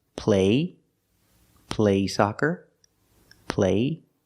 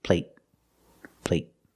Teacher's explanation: But the stop T at the end makes the long A a little shorter.